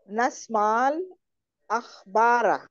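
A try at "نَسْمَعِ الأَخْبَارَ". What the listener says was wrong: কিভাবে পড়তে হবে? নাসমা কাসরা দিয়ে, তাই না? নাসমাইল আখবারা, নাসমাইল আখবার।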